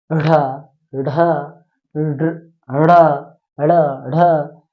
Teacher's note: मतलब इसमें ढा, इसमें ड की आवाज आना चाहिए, इसमें ढा की आवाज आना चाहिए, साथ ही साथ ड़ करके ऐसे महाप्राण की जैसे आवाज निकलनी चाहिए